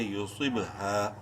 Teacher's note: ہا الف زبر ہا، الف مدہ ہے، ہا کو ایک الف کے برابر لمبا کریں گے۔ · صاد کو منہ بھر کے پڑھتے ہوئے با میں قلقلہ کرنا ہے، با جو کہ صاد بولڈ لیٹرز میں سے ہے اس لیے بولڈ ہوگا، اور با حروف قلقلہ میں سے ہے، ساکن ہے اس لیے یہاں پر با میں قلقلہ ہوگا۔